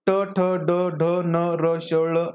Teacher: ट ठ ड ढ न र श ळ हे मृदा किंवा मूर्धन्य आहेत